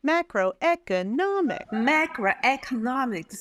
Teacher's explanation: So MA and NO, those are two primary stresses. And then E is halfway. · You've got primary stress, two primary stresses and one secondary stress.